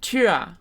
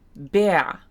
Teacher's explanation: The vocalic R, that tiefschwa sound, is found at the end of syllables and in diphthongs. So it's after a vowel at the end of a syllable.